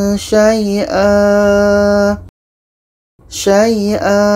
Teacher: ketika berhenti adalah Mad Iwat jadi ini kita panjangkan dua harkat